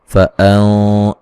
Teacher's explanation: नून साकिन का मोटा इख्फा है, क़ाफ को मोटा अदा करेंगे